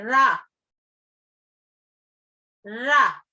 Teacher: रा का उच्चारण करते समय जीभ की नोक मसूड़ों के नजदीक आकर कांपती है। रा, जीभ जो है वो मसूड़ों के पास आकर कांपती है, रा, उसको प्रकंपी व्यंजन कहते हैं।